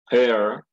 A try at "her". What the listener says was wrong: No, no hair. Ahí está diciendo pelo, cabello, ¿verdad? Pero si usted dice her, her. Hair y her is different. Es diferente. Hair y her. Aquí diga her, como con la garganta. Her. Y hair. Diga hair. Hair.